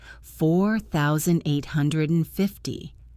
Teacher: We usually stress the hundreds and the thousands. Listening for that stress pattern helps you catch the number even if you miss the small words.